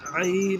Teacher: عین ہے تو ہم بیچ حلق سے ادا کریں گے